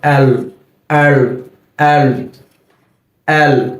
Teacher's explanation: আমাদের জিহ্বার আগাটা উপরের তালুর সাথে লেগে যাবে